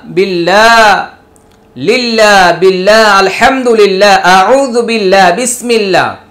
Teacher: আল্লাহ শব্দের পূর্বে যখন জের হবে তখন আল্লাহ শব্দের লামের উচ্চারণের গতি পাতলা হয়ে যাবে